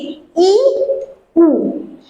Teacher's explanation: এই ই আর উ উচ্চারণের সময় জিভ কিন্তু ওপর দিকে ওঠে, তাহলে এটাকে বলা হয় উচ্চ স্বরধ্বনি। ই আর উ এই ধ্বনি দুটিকে বলা হয় উচ্চ।